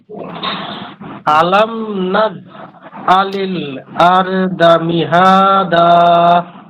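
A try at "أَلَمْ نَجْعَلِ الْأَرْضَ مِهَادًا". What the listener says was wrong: মাশাআল্লাহ। নাজ আরেকটু ধাক্কা দিতে হবে, ধাক্কা এবং শব্দ।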